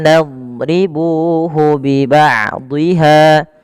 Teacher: lafal ha di sini ada bacaan mad tabi'i, yaitu dipanjangkan huruf hanya dua harakat